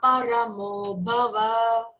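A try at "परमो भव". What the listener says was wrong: Don't drag or elongate va. Bhava. Bha, Mahaprana again. Okay, you have to say, emphasize that one.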